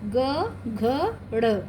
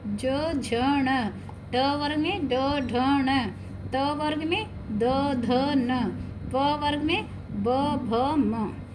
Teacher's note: ये व्यंजन वर्गों के तीसरे, चौथे और 5वें व्यंजन और य, र, ल, व और ह, ये सब सघोष हैं।